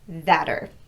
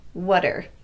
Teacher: Notice that the T also gets tapped in this one, so it sounds like a quick, light D. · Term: T gets tapped